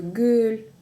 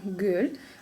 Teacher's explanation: Г мягкое, так как слово мягкое